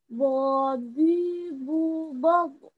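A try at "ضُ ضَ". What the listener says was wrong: Oke, bagus.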